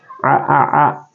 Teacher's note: termasuk di wastul halqi berarti di pertengahan tenggorokan